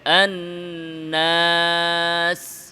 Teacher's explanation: নুন নাকে কিন্তু আলিফ নাকে যাবে না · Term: আলিফের উচ্চারণের সাথে গুন্নার মিশ্রণ